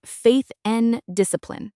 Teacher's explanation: The word and is almost never pronounced fully as and in the middle of a sentence. We usually just say n. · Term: linking